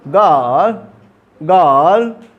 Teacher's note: आई और आर जब दोनों एक साथ आ गए तो अ को थोड़ा खींच के बोलना है। अ को ही क्या, अब वो अ नहीं रहा, अब वो अ थोड़ा खींचा जाएगा।